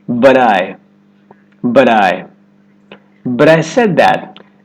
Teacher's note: You're going to hear this quick D sound when the T comes between two vowel sounds, whether that's within a word or in between two words. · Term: flap T